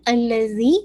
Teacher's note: الذی یاد رکھیے زال ہے, اور زال کی مخرج کو میک شور کیجیے گا کہ آپ کی ٹپ آف دا ٹنگ, آپ کے سامنے کے جو فرنٹ ٹیتھ ہے اپر اینڈ دا لوور, اس کے بالکل ایجز کے ساتھ لگے گی